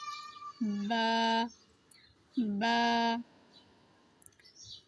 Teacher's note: পরে রয়েছে বা। বায়ের উচ্চারণটা দুই ঠোঁটের সাথে হালকা করে লাগিয়ে উচ্চারণ করতে হবে।